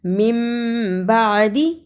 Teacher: نون ساکن کے اوپر چھوٹی سی میم ہے، اس کے فوراً بعد با آتا ہے، اسے اقلاب کہتے ہیں